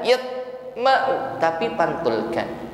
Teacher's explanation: Summa yaqo, huruf ta sukun qalqalah, nampakkan bunyi yang memantul, jangan ditahan